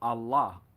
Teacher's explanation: The syllables of this are accented equally, with a certain pause between them, and are usually combined by fakirs with a rhythmical motion of the body to and fro.